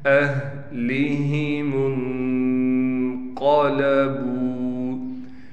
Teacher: میم کو نون سے ملائیں گے، غنّے کے ساتھ قاف کو موٹا کر کے پڑھیں گے، با کے بعد واو ہونے کی وجہ سے با کو ایک الف کی مقدار کھینچیں گے۔